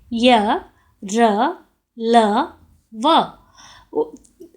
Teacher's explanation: अंतःस्थ व्यंजन वे होते हैं जिनका उच्चारण करते समय जिह्वा मुंह के किसी भी भाग को पूरी तरह स्पर्श नहीं करती है।